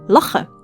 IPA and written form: ˈlaxn̩ (Lachen)